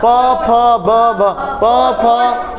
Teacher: होंठ टच कर रहे हैं आपस में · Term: ओष्ठ